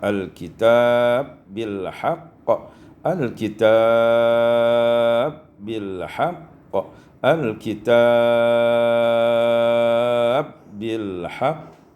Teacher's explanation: Pada ayat 213 al-kitab bil haqq idghamul ba fil ba, diidghamkan ba pada ba. Di situ terdapat 3 wajah mad, iaitu qasar, tawassut dan isba'.